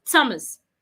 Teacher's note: The H in that name is silent. So when you're pronouncing it as a T, not as a TH. It means that you will not stick out your tongue.